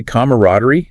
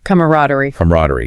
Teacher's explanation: some traditionalists might say camaraderie with 4 syllables, but most American speakers now use a more streamlined 3-syllable version